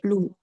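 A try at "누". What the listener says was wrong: Tapi ini bukan L, Kak, yang atas. Ini Ini huruf N. Berarti bacanya jadi nu, betul.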